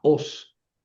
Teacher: Son dos sílabas. La os no forma diptongo, no es laos.